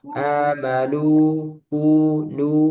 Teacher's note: illalladzina الذين amanu آمنوا Nah, nu ini mat sehingga dia makhrajnya al-jauf di rongga, rongga mulut dan rongga tenggorokan. Jangan masuk hidung. Amanu kalau dipencet nu, nah itu kerasa nu, ini kurang tepat.